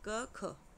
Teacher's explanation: स्वर यंत्रिका में किसी भी प्रकार का कंपन नहीं होता, वाइब्रेशन नहीं होती, उन्हें अघोष कहते हैं।